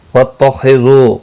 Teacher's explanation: خو مستعلیہ ہے، پر پڑ جائے گا، دو واو مدہ ہے، ایک الف کے برابر کھینچ کر پڑھیں گے۔